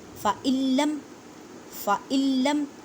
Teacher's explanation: صادقین فَإِلَّمْ اب دیکھیں نون ساکن ہے, نون ساکن کے بعد لام ہے تو ادغام بلا غنہ کریں گے